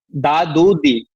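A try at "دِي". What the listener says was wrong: টেনে বলতে হবে যে হলো না এটা।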